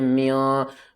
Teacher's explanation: نون کی آواز کو چھپا کر پڑھیں گے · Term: اخفا